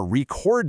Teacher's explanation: If it's a verb, the spotlight moves over to the second syllable.